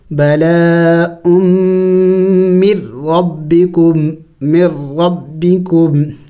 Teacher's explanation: لیکن آسانی کے لیے ہم یوں کہیں گے کہ سکون والے حرف کے بعد جب شد آ جائے وہاں اس سکون والے حرف کو نہیں پڑھا جاتا بلکہ اس سے پچھلے والے حرف کو اس مشدد والے حرف کے ساتھ ملایا جاتا ہے، جیسے کہ ہم یہاں پہ میم کو را کے ساتھ ملا رہے ہیں اور نون ساکن کو نہیں پڑھ رہے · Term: ادغام